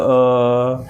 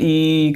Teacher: इ को प्लुत बनाना है तो इ करके बहुत देर तक बोलेंगे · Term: प्लुत स्वर